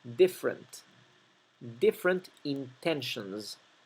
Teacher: La primera E de la palabra different se omite, no se pronuncia, es muda. No decimos different, decimos different.